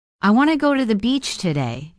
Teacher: The small words like to, the, and today are less stressed.